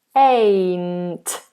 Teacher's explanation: So you have the diphthong A, which is the moving vowel. Then you have the N, front of the tongue up.